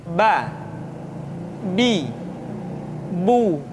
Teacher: Huruf Ba dikeluarkan dengan cara merapatkan kedua bibir kita. Ba, Bi, Bu.